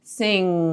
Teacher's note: you'll feel the tongue just kind of rising up to make contact with the soft palate